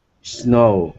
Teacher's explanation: No vibration. No vibration. This S sound is unvoiced.